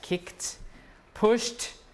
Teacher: k is voiceless so you add the t